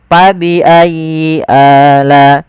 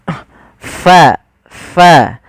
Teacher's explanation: Bagaimana cara melafalkannya? Adalah ada angin yang dikeluarkan, karena fa salah satu sifatnya sifat hamz, yaitu mengalirnya nafas kita